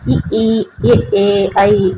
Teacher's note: வாய் திறக்கும் முயற்சியுடன் நாக்கின் அடி ஓரமானது மேல்வாய் பல்லை பொருந்தும் முயற்சால் பெறுகின்றன என்னது மேல்வாய் பல்லு பொருந்தும் நடி அந்த நாக்கின் அடி ஓரம் அ ஈ